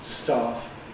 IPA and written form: stɑːf (staff)